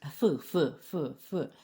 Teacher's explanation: щоб його вимовити потрібно просунути язик між зубами і ніби подратувати когось